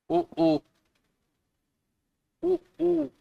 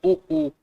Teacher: ठीक है, उसके बाद उ उ उ उ होंठ देखिए क्या हो जाते हैं, गोल। तो ऊ बोलने के लिए हमें क्या है कि अंदर से जो है वो हवा बाहर आ रही हो और उसमें आप होंठ गोल कर दीजिए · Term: ओष्ठ्य